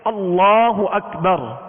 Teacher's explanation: پہلے حرف پر زبر یا پیش ہوں، زبر یا پیش ہوں، یہ دو حرکت، تو اللہ عز و جل کے لام کو پر یعنی موٹا پڑھیں گے۔ اور اگر اس میں جلالت اللہ عز و جل کے لام سے پہلے والے حرف کے نیچے زیر ہو تو اس میں جلالت اللہ عز و جل کے لام کو باریک پڑھیں گے۔